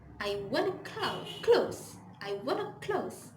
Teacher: the phrase want to become wanna